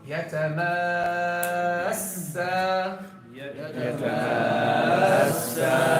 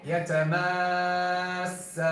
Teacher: You're gonna raise the pitch of the sound. Raise the pitch of the sound right before the sukoon. Right before the sukoon, which is the first part of the shadda. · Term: nabar